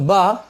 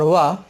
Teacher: तो बा ओष्ठ है और वा दंतोष्ठ है